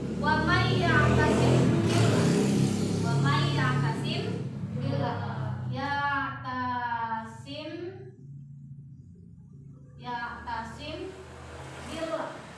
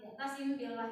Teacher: huruf mimnya dimasukkan kepada huruf ba, didengungkan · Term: ikhfa syafawi